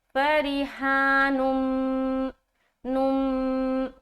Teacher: ادغام ہو رہا ہے، اور غنے کے ساتھ والا ادغام کریں گے